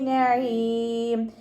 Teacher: നഈം അതിൻ്റെ മഖ്റജ് വസത്തുൽ ഹൽക്കാണ്, സൗണ്ടിനെ വ്യക്തമാക്കി കൊടുക്കുക